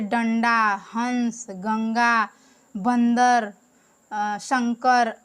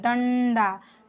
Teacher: जब हम लोग बोलते हैं डंडा तो हवा नाक से निकल रही है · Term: अनुस्वार